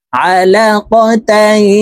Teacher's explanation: তানউইনের পরে ইকফার হরফা আসছে তো এই তাকে নাকের ভিতরে লুকাইয়া গুন্নার সহিত পড়ব এই গুন্নাকে ইকফাহ গুন্নাহ বলা হয় আলাকাতাই